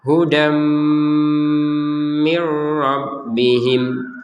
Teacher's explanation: Tapi karena bertemu dengan huruf mim dimasukkan menjadi hudam. dari yang asalnya hudan ketemu sama mim dimasukkan ke mim menjadi hudam, dan ada dengungannya, masuk kemudian dengun, hudam mir rabbihim.